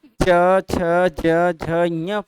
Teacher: जब हम च छ ज झ ञ पढ़ते हैं तो जीभ हमारा उठ करके उस खुरदरे वाले भाग को टच करता है। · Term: तालु